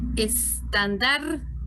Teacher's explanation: Y ven que en mi tono de voz se resalta la palabra, la sílaba dar, ¿verdad? Entonces aquí en estandarte el acento es un acento prosódico porque no lleva tilde. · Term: sílaba tónica